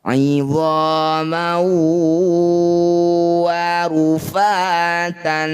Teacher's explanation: Fathah tanwin bertemu waw disebut bacaan namanya idgham bigunah, ya. Bunyi fathah tanwin masukkan pada waw, kemudian dengungkan 2 harokat.